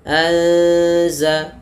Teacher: Kemudian faanzalna anza anza ya ada mati bertemu za kita namakan dengan ikhfa. Cara membacanya itu huruf nunnya samarkan kepada huruf zalnya langsung.